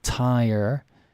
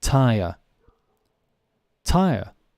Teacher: the American pronunciation is pronouncing the R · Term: rhotic